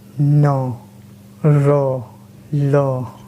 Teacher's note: वर्ष से मतलब होता है मसूड़ा। जिन व्यंजनों के उच्चारण में जीभ ऊपरी मसूड़ों को स्पर्श करता है वर्ष व्यंजन कहलाते हैं। जैसे न, र, ल, ये सब वर्ष व्यंजन में आते हैं।